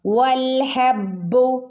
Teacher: ബിന് ശ്രദ്ധ വരുമ്പോൾ ഒന്ന് കനപ്പിച്ചു കൊടുക്കണേ